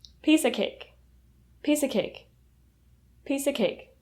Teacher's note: When you pronounce piece of cake, the of reduces to a.